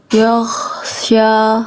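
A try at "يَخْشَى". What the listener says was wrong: Nah, itu nafas ya. Itu nafas itu kho itu. Ya, bukan ya, tapi ya. Yakhsha. Oke, jadi fokusnya Kak Alzati ngalirin suara, bukan ngalirin nafas. Yaw, bukan yaw. Yaw, sya.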